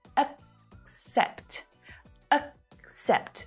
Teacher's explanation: The first syllable is unstressed, right? So it reduces down to that schwa sound. Accept. The second syllable is the stronger one. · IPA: /ək'sept/, /əkˈsept/